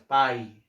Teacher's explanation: para paisano, en la sílaba pai, primero para la A abres la boca y para la I cierras. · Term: decreciente